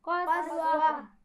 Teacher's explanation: اس میں قاف کو موٹا پڑھیں گے لیکن اس کے بعد جو سین ہے اس کو باریک ہونا چاہیے